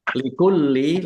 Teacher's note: lamnya dibaca double, ada tasdidnya, ditekan biar tampak double.